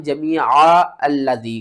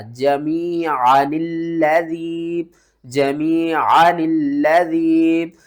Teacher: کیونکہ یہاں پر دیکھیں تو یہ جو گول سرکل آ رہا ہے نا اوپر، اس کا مطلب ہے کہ اس الف کو آپ نہیں پڑھیں، اس الف کو چھوڑ دیں، ٹھیک ہے؟ تو نون کو ہم نے کیا کرنا ہے؟ لام کے ساتھ ملا کر پڑھنا ہے